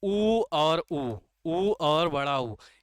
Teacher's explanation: ये दोनों कहाँ से उच्चारित किए जाते हैं, ओष्ठ से, ओष्ठ से, ओष्ठ से।